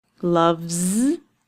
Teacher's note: The V sound at the end of the word means that it will be a voiced sound and it will end with a Z.